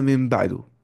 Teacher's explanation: نون ساکن اور تنوین کو میم سے بدل کر گننا کے ساتھ پڑھیں گے، ٹھیک ہے؟ اگر نون ساکن اور تنوین کے بعد اگر با آ رہا ہے تو قلب ہو جاتا ہے وہاں پہ، یعنی کہ نون ساکن اور تنوین کو میم سے بدل کر گننا کے ساتھ پڑھیں گے، سمجھ رہے یہ چیز؟ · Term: اقلاب